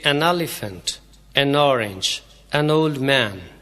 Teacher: این کو بولتے وقت چھوٹی سی الف کی آواز دے کر این کو آگے والے لفظ کے ساتھ ہی ملا دیتے ہیں